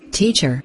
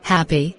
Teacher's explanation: two syllable nouns teacher and adjectives happy stress the first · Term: word stress